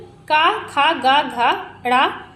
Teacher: है तो वह देखिए कंठ से होता है। क वर्ग का उच्चारण स्थान होता है कंठ से होता है